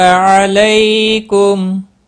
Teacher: علی لی یالین ہے تھوڑا نرمی کے ساتھ کھینچ کر ادا کریں گے ، میم ساکن ہی رہے گا وقف کی صورت میں، اور